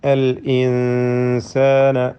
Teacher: ഇതിൽ സാക്കിന നൂനിനെ മണിച്ചുകൊണ്ട് ഇഖ്ഫ ഹഖീഖി നൽകി അവ്യക്തമാക്കി ഉന്നത്തോടുകൂടി ഉച്ചരിക്കണം.